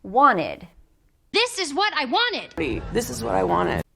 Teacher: when we add the Ed we have to add another syllable and when that happens we often drop the T